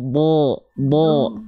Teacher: Jangan monyong, diangkat pangkal lidahnya. Jadi bunyi vokal O-nya itu bukan bertumpu pada kita, pada bibir kita yang kita monyongkan, tapi diangkat pangkal lidahnya. Bo, gitu ya. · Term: huruf dotnya